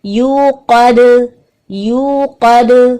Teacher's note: دال پہ قلقلہ ہوگا, بالکل باریک قلقلہ رکھنا ہے کیونکہ دال سے پہلے قوف ہے نا اس کو ہم موٹا کریں گے.